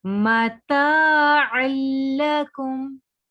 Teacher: ता को हम खींचेंगे बिकॉज इसके साथ अलिफ आ रहा है